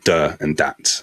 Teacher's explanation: And the pronunciation of things like the and that may become duh and that. And that replacing of th with a d is something that you'll hear in West Africa again in the Caribbean as well